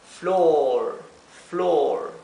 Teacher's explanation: la o se pronuncia como una o larga